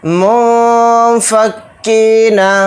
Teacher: منفکین، میم کو نون ساکن میں ملا دیں گے، نون ساکن کے بعد فا آ رہا ہے تو اس میں اخفا کا قاعدہ ہو رہا ہے، کیونکہ فا حروف اخفا میں سے ایک حرف ہے تو اس لیے نون کی آواز کو ناک میں چھپا کر اخفا کے ساتھ پڑھیں گے